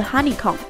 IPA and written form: ˋhʌnɪ͵kom (honeycomb)